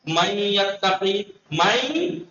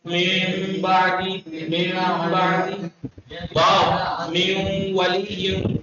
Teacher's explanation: غنہ یعنی ناک سی آواز آئے گی. نون نہیں ادا ہوگا بس نون کی خوشبو سی آئے گی.